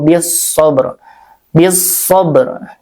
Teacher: langsungkan aja ke huruf shad lamnya tidak terdengar ya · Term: alif lam syamsiyah